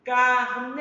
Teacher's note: sílaba tônica de carneiro já aparece logo na frente Carneiro então a sílaba tônica da palavra carneiro é a penúltima sílaba